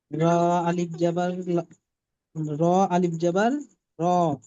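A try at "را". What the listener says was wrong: টান দেন র, এক আলিফ মাদ্দা তো এটা।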